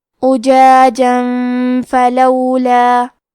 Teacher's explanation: آخری میں جیم پہ تنوین زبر ہے، پھر حرف الفاء آتا ہے. کلمت فلولا فا حروف الاخفاء میں سے ہے تو ہم یہ حکم کو غنہ کے ساتھ ادا کریں گے